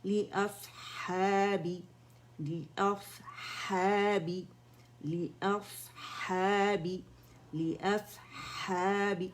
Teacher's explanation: صاد میں اطباق ہے، ٹھیک ہے، موٹا پن ہے، مزید موٹا ہے تو اس کی موٹائی کو ظاہر کریں گے، اس کا ہمس اینڈ رخاوہ بھی ہم نے ظاہر کرنا ہے.